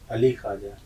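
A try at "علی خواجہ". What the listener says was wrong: ठीक, अली ख्वाजा, ये ख्वाजा नहीं होगा, अली ख्वाजा यानी खे का तलफ्फुज आपका ठीक होना चाहिए।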